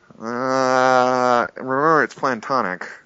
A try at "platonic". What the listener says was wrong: It's platonic, not planned.